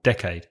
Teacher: we agree on the pronunciation should stress the first syllable